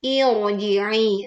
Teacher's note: Irji'i karena sebelumnya ada hamzah wasol, maka ro sukun ya ini dibaca tebal.